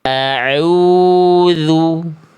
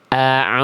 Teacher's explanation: Karena ainnya masuk ke dalam rongga hidung. A sengau dia.